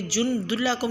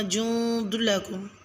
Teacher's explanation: لفظ جند لکم میں نون ساکن پر اخفا کریں یعنی جند لکم نہیں پڑھنا، جند لکم۔